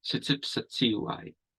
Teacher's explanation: It's because the d sound doesn't exist in Blackfoot. There's no ti. It becomes tsi. So we add this s to make it flow.